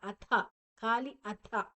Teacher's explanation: ಅಥ ಥ ಮಹಾಪ್ರಾಣ. ಅತಃ ಬೇಡ, ಅಥ ಖಾಲಿ ಅಥ.